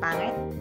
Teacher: I don't really say E for example, pangit. We kind of say it like eh.